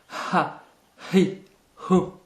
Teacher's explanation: C'est un H expiré très prononcé.